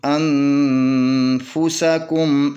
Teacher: اخفا حقیقی مع الغنہ۔ تو اس نون کے اوپر 2 حرکت کے برابر غنہ کریں گے، تو اس کے بعد اس کو فا کو پڑھیں گے۔